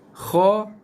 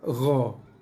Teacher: Huruf kha adalah huruf yang lepas nafas. So bila kita lafazkan huruf kha, akan ada hembusan nafas yang keluar. Berbeza dengan huruf gha, tak ada hembusan nafas yang keluar. Kalau ada pun sangat-sangat sikit hembusan nafas yang keluar, kalau ada.